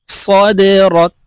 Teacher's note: দাল কলকলার হরফ নিচের দিকে ধাবিত করে ধাক্কা দিয়ে উচ্চারণ করতে হবে।